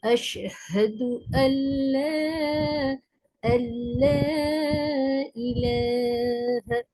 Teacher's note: جب جزم اور تشدید والے دو حرف برابر برابر آئیں، پہلے پر جزم اور دوسرے پر تشدید ہو، جیسے ان پر جزم اور لام پر تشدید ہے تو جزم والے حرف کو چھوڑ دیتے ہیں، نون ساکن کو چھوڑ کر لام کو پڑھیں گے